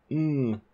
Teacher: there isn't a release of air in the mouth there's no turbulence being caused by the mmm because the air is going through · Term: nasals